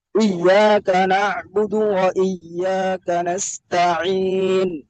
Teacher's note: ওয়া টান হবে না, আপনার টান হয়ে যায়, এক আলিফের উপরে টান হয়ে যায়।